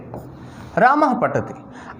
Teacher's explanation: क्योंकि पा और फा के पहले जो विसर्ग आता है उसका आधा उच्चारण होता है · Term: अर्ध विसर्ग